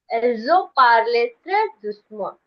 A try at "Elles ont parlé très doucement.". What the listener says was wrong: Good for you.